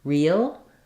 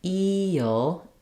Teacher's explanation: I talk about this, I do have a video just talking about the word real, but because we have the L at the end, when I'm saying eel, there's a little bit of a gliding from the high front vowel to that dark L.